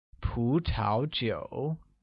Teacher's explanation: carries a mid-rising tone on the first U and a falling rising tone on the second U, becoming 葡 萄 酒.